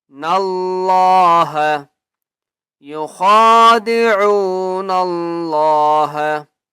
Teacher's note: اللہ کا نام موٹا کر کے پڑھیں گے کیونکہ اس سے پہلے نون ہے اور نون کے اوپر زبر ہے